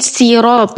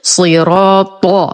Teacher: الصاد مفخمة بأقل درجات التفخيم، الراء أيضا مفخمة مفتوحة وبعدها ألف، والطاء أقوى حرف في التجويد فنقول صراط بدون ضم الشفتين